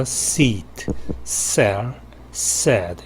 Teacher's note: 일종의 홈통 혹은 고랑이라고 이렇게 번역이 되는데요. 그런 좁은 통로로 공기가 새어나오고 상당히 세차게 새어나오고 마찰이 실제 일어나는 곳은 이 혀끝 부분이라고 할 수가 있습니다. · 그런 좁은 통로로 공기가 새어나오고 상당히 세차게 새어나오고 마찰이 실제 일어나는 곳은 이 혀끝 부분이라고 할 수가 있습니다. 그래서 마찰 구역이 좁고 짧다라고 할 수 있습니다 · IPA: /s/